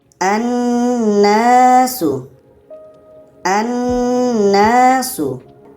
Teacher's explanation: nun sydah hukumnya adalah wajibul ghunah. Wajib kita dengungkan. Jadi kita baca dengan annasu. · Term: wajibul gunnah